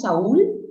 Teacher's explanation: una vocal abierta con una vocal cerrada y el acento está en la cerrada. Eso se llama hiato acentual, ¿sí o no?